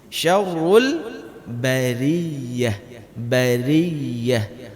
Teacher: Syarrul, ra dari tebal dibaca tipis.